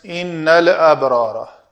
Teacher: لام کے مخرج کو نہیں چھوڑنا اور آگے حمزہ کو لے لینا ہے، اب با کو قلقلہ کرنا ہے، را دونوں پر پڑی جائیں گی، نون مشدد ہے، غنہ کیا جائے گا۔